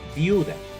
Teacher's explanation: El dictongo está en la sílaba viu, formado por dos vocales cerradas, la i y la u. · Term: dictongo homogéneo